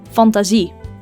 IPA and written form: fɑntaːˈzi (Fantasie)